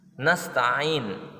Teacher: Nasta'in hukumnya mat arid li sukun karena sebelum waqaf ada mat tabi'i. Cara membacanya boleh panjang 4 harakat atau lebih dan juga boleh 2 harakat